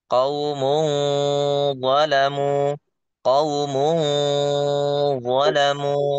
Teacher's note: Jadi ujung lidah itu tidak nempel ketika membaca ikhfa. Ya, itu nggak nempel ngambang.